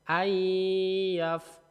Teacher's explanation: Jadi bukan an yaf, tapi nonnya dileburkan masuk ke ya-nya. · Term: idgham bi gunnah